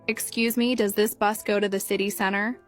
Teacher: Notice how they stress certain words like city center and how their voice goes up at the end of the question.